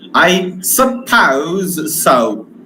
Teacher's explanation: There is hesitation, there is reluctance, and that condition we use falling rising tone.